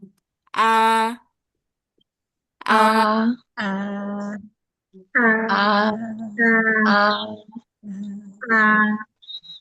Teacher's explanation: Hamzah dia kalau geter di tenggorokan bagian bawah berarti sudah pas sudah keluar dari tenggorokan bagian bawah